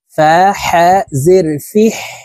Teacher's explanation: হা হরফকে হলকের মধ্যখান থেকে উচ্চারণ করতে হবে, কারণ হার মখরাজ হলকের মধ্যখান থেকে হবে।